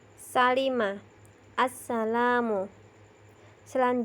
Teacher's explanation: bunyi huruf Sin diantara ujung lidah dengan gusi atas dan bawah